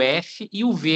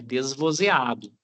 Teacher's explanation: De faca é desvezeado e de vaca parece um mosquitinho voando, né? V é vozeada. Os dois saem do mesmo lugar entre o lábio e o dente.